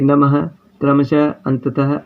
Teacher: इस ध्वनि का उच्चारण आधे ह के समान, आधा ह यानी कि ये जो हलंत लग रहा है दिखाई दे रहा है, ये आधा ह के समान है होता है, यानी आधा है। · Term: विसर्ग